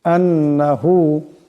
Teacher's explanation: এখানে নুনের উপর তাসদীদ আছে, এখানে একালিফ পরিমাণ গুণনা হবে।